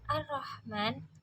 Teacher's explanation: Pada lafaz Ar-Rahman terdapat hukum tajwid alif lam syamsiyah karena ada huruf alif lam bertemu dengan huruf syamsiyah ro. Dan cara membacanya idgham huruf alif lam masuk ke dalam huruf ro.